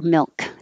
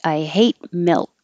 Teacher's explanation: This kind of L is a dark L, meaning, I don't know why it's called dark L, but instead of a clear or light or just normal L, which is touching behind the top teeth, this kind of L can be made with more of the middle of the tongue touching the middle of the mouth, and the tongue tip can stay down behind your bottom teeth.